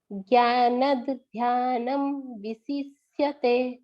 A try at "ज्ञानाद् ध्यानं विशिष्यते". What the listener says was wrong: हाँ, ज्ञानत नहीं मैम, ज्ञानाद ध्यानम, क्योंकि ना के ऊपर बड़े आ की मात्रा है ना, ज्ञानाद ध्यानम। हाँ मैम, ये थोड़ा सा आपका बड़ा आ की जो मात्राएं हैं ना वो कहीं कहीं मिस हो रही हैं, तो आप एक बार